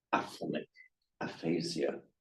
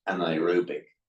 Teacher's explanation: so that n is put in for the euphonic combination to prevent the clash of two vowels